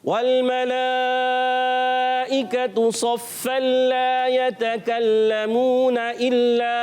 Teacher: जब मिलाकर पढ़ेंगे तो तनवीन के बाद लाम आया, इदगाम बिला गुन्ना हो जाएगा।